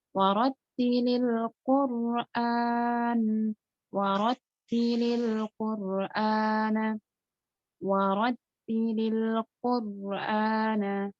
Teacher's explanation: Ro-nya sukun, sebelumnya ada huruf qaf yang dhammah. Maka ro dibaca tebal. Bukan kur. Bukan kur, tapi kur. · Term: tafkhim